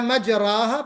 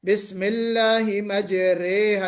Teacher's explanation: اسی کو جو ہے الف ممالہ کا مطلب، یہ جو رے کے بعد جو الف آ رہا ہے اس کو ہم مائل کر دیتے ہیں یا کی طرف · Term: امالہ